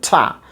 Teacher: বাতাসের চাপ দিতে হবে, স্ট্রং ব্রেথ ফোর্স আছে সেটাই। টায়ের জায়গায় আমরা এটাকে ইংলিশে উচ্চারণ হয় টা, বাতাসের চাপ হয় সেখানে, মহাপ্রাণ ধ্বনি। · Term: অ্যাসপিরেশন